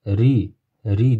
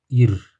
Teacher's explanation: Ro harfi kasrali kelganda tarqiq qilib ingichka qilib o'qiymiz.